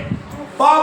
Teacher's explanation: नीचे वाले ओठ ने ऊपर वाले ओठ को छू दिया, इसलिए पा जो है स्पर्श व्यंजन।